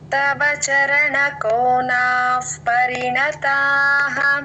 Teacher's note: పా ముందు విసర్గ ఎఫ్ లాగా చెప్పాలి